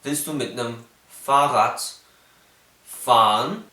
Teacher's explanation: Wir nennen das R-Vokalisierung. Das R ist nicht mehr ein frikativer Laut, sondern es wurde schon ein Vokal, und zwar ein tiefes Schwa.